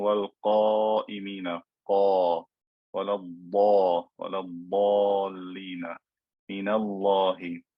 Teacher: the alif is preceded by a fat letter, so it will also be fat in pronunciation.